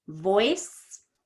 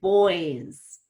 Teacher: voice is quicker because it ends in an S. Boys is more stretched out because it ends in a Z.